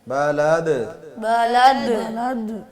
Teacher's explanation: تھوڑا سا قلقلہ کرنا ہے دال کو, زیادہ زور نہیں ڈالنا اس پہ, آرام سے بڑی نرمی سے سارے لفظوں کو آرام سے پڑھنا, زور سے شدت سے نہیں پڑھنا, ٹھیک ہے.